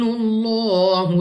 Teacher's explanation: لام آف اللہ سے پہلے حرف کے اوپر ہے پیش، تو اس لام آف اللہ کو پر یعنی موٹا پڑھیں گے، منہ اور آواز کو کھول کر